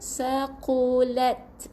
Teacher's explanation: Huruf qaf yang tebal ni bukan ku, huruf qaf tebal saqulat.